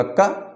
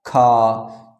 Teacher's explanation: जो का बोला है उसमें जो मेरे मुँह से हवा निकलती है वो कब निकलती है, जब खा बोलते हैं तो हवा ज़्यादा निकलती है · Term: महाप्राण